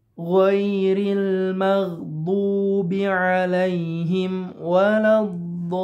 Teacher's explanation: Huruf yang bertasydidnya di sini ada huruf lam. Maka panjangnya mesti 6 harokat, tidak boleh kurang. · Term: mad lazim mustaqbal